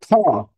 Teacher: শ্বাস বেশি যায় তার মানে মহাপ্রাণ